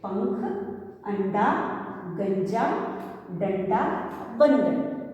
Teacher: तो इन शब्दों को हम नाक से बोलते हैं और मुंह से भी बोलते हैं